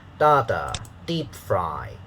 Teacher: stressed uh it has a higher pitch so da and then second syllable is unstressed so it has a lower pitch